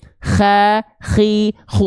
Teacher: atau ujung tenggorokan yaitu huruf k tempat keluar k di sana karakteristik nafasnya punya nafas juga mengalir tapi seperti mendengkur · kho dilafalkan dari tenggorokan paling luar atau ujung tenggorokan, yaitu huruf kho, tempat keluar kho di sana.